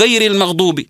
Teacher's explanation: كذلك من ضمن التغييرات الصوتيه الموجوده واللي اثرت عليها لهجتنا العاميه صوت الغين بعض البلدان يقراه قاف